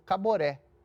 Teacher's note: 3 sílabas, uma sílaba tônica no final